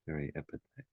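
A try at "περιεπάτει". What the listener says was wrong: Actually, the accent's on the second last syllable. Periepate. But that epsilon after the iota is significant because that's the augment, the epsilon there. Peri is the preposition, and is the augment.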